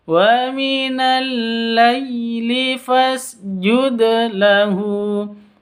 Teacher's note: Jud dal sukun, dal mati, qalqalah dipantulkan ke huruf dalnya. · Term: qalqalah sugro